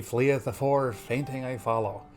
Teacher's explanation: the Fs, they're breathy, like he's barely got wind enough to push out the words.